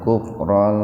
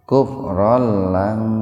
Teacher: fathatain ketemu dengan lam, jadi membacanya idgham bila guna, dimasukkan ke lam tanpa mendengung.